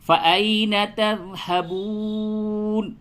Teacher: آیت نمبر 26 یوں پڑھیں گے، فَأَيْنَ تَذْهَبُونَ، فَأَيْنَ یہ یا لین ہے، یا ساکن سے پہلے جب زبر ہو تو اسے یا لین کہتے ہیں، اور یا لین کو نرمی کے ساتھ ادا کرتے ہیں، تو یوں بولیں گے فَأَيْنَ تَذْهَبُونَ۔